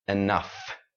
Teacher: we put the stress on the ending syllable